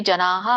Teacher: ವಿಸರ್ಗ ಹಕಾರ ಅಲ್ಪವಾಗಿ ಹೇಳಬೇಕು